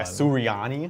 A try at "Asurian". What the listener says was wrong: No, there's no. It's saying there's no. They're saying there's no I sound at the end. Assyrian.